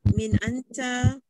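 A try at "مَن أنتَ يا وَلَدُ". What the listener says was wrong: Min anta ke? Min anta ke? Min ke man?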